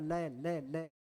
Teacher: स्वास दोनों तरफ दोनों भागों में फैलती · पार्श्विक व्यंजन है लय। लय लय, लय का जब उच्चारण करें श्वास वायु जीव का दोनों तरफ, दोनों भागों में फैलती है